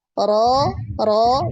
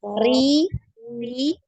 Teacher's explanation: ro ro ini tebal ro Ri Ri tipis